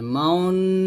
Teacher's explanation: ইসমাম কোরআন মাজিদের ভিতরে এক জায়গায় আছে, ক্বালু ইয়া আবানা মালাকা লা তা'মাউন্না, এই যে এখানে আমাদের ইসমাম করতে হবে, মাউন, এরকম, অর্থাৎ এখানে ঠোঁট গোল করতে হবে। ঠোঁট গোল করে এখানে এই গুন্নাটা আদায় করতে হবে, লা তা'মাউন্না, মাউন্না, এরকম ভাবে ঠোঁট গোল করে এখানে ইসমামটা করতে হবে।